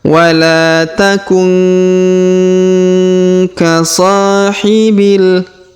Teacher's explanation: Huruf la kita panjangkan 2 harokat karena alif kecil atau alif di depannya. Wala takun, huruf nun sukun bertemu ka, maka kita dengungkan dan kita samarkan.